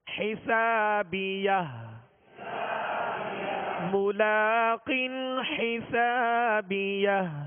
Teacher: آخر میں ہا ساکنہ ہے، ہا ساکنہ کی آواز واضح ہو